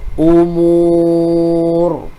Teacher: Muncungkan bibir, tebalkan ra.